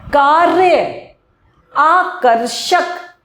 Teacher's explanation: र हल्का सा आएगा जीभ को ऊपर से आएगा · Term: रेफ